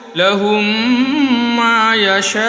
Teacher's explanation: مد کے بعد حمزہ اسی کلمے میں ہے، اسی کے ساتھ مد متصل کھینچیں گے تو لہم ما، یا شین الف زبر شا، لہم ما یشا۔